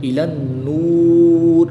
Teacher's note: لام کو نون کے ساتھ ملائیں گے